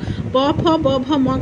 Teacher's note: प फ ब भ म का प्रोनंसिएशन करेंगे तो ओट से होगा